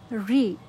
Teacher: ঋ হচ্ছে মূর্ধা থেকে উচ্চারিত হয়